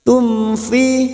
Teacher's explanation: mim sukun bertemu Fa Idhar syafawi mim sukun dibaca jelas